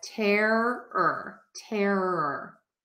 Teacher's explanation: I link or connect my r to the ER so I connect that air and the ER together · So terror and horror have those R movement vowels in the middle.